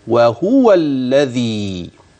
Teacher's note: لاحظ اللام المشدده لا غنه فيها